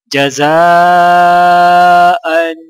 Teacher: جیم زبر جا، زا الف مد زبر زا، جزا حمزہ دو زبر ان، جزاء ان۔ الف کے اوپر مد ہے 5 الف کے برابر، یعنی 5 سیکنڈ کھینچ کر پڑھا جائے گا۔ حمزہ کے اوپر 2 زبر ہے تو یعنی غنہ کیا جائے گا۔